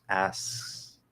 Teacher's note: it creates the illusion that there's a k sort of like a light or a half k · for example how instead of doing ask back into the s you can hold that s bring the back of the tongue towards the k position without actually hitting it so that s continues asks okay it creates the illusion that there's a k sort